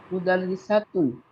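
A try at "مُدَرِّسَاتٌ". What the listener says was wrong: মুদাররিসাতুন। হ্যাঁ, সাটাকে একটু টান দিতে হবে, আলিফ আছে এই জায়গায়।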